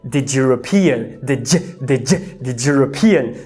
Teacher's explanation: Você vê como que o d ou o t vieram a ser pronunciados no palato e a gente acabou falando t ou j, percebeu? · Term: palatalização